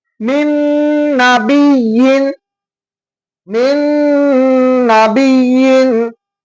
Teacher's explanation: நூன் சாக்கினை நூனோடு இணைத்து அழுத்தி ஓத வேண்டும்